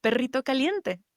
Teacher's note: So I pronounced it as that trilled, rolled R sound.